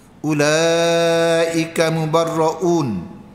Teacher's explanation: Mad wajib empat dengan lima. Ha ya. Huruf mad bertemu Hamzah.